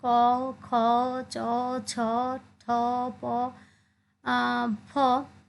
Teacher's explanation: যেগুলো উচ্চারণে স্বরতন্ত্র কম্পিত হয় না সেগুলো হচ্ছে অঘোষ ধ্বনি